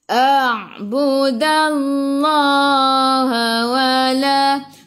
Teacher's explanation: Masuk ke dalam ain. Jelas Sebelum Allah ada baris atas kena baca tebal.